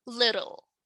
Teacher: the consonant L is produced or pronounced as a separate syllable